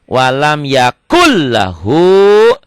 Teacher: Walam yakun jadi L, yakul idgom. Nah, nun mati ketemu lam nyamber dan double L